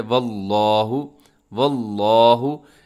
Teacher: वल्लाहु लफ्ज़ अल्लाह को मोटा पढ़ा जाएगा क्योंकि लफ्ज़ अल्लाह के लाम से पहले वाव के ऊपर ज़बर है